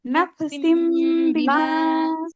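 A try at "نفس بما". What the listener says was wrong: মধ্যে একটুখানি কলকলা হয়ে গেল, কলকলা হবে না, হ্যাঁ নাফসিম বিমা। না বাপু বলেন তো এখানে মিম হবে কোথায়?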